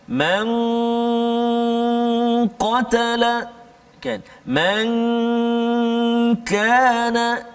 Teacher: huruf qaf dengan kaf di pangkal lidah kita. Man qatala kan, man kana, tapi kena hati-hati kat situ, huruf qaf tebal, huruf kaf tak tebal. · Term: martabat adna